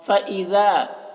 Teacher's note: ذال کو باریک پڑھیں گے اور یہاں پر الف مدہ ہے۔